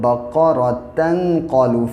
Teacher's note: اگر ملا کے پڑھیں گے تو تا پھر تا ہی رہتا ہے، لیکن اگر رک جائیں گے سانس توڑ دیں گے تو دو زبر کو گرا دیں گے، بقرتن سے بقرہ ہو جائے گا.